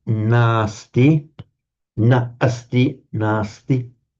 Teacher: Na asti has to become nasti by the coalescing of the final short a followed by a short a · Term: lengthening of that a